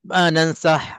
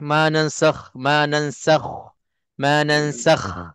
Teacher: kha jangan ditipiskan. Kalau tipis, dia akan menyerupai ha kadang-kadang, ha dada.